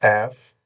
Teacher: আসলে এটা হচ্ছে এফ, উপরের 2 দাঁত নিচে ঠোঁটের পেটের সাথে লাগবে